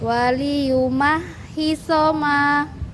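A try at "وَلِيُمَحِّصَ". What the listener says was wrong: Baik, barakallahu.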